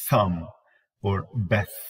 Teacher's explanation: when you put your tongue between your teeth, you say as in thumb or beth. Okay, that is voiceless. And with the same exact location, with the same position, the tongue between the teeth, we call that is a voiced form.